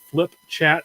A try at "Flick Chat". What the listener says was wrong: That's Flick Chat. Sounded like you said flip. Like you're going to thump your little brother in the head. Flick Chat.